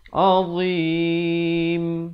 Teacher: diwaqafkan pada huruf mim, ditutupkan mulut dengan sempurna bagi menyempurnakan bunyi huruf mim